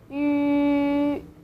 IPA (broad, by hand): ǖ